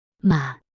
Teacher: falling and then Rising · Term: third tone